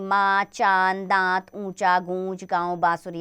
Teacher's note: अनुनासिक चंद्रबिंदु ऐसे स्वर जिनका उच्चारण नाक और मुख दोनों से होता है।